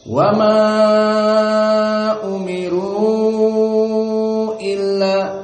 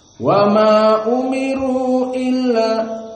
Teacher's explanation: Walakin huna qira'ah Abu Ja'far wa Ibnu Katsir al-qasr, dibaca hanya 2 harokat saja. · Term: qasrul munfasil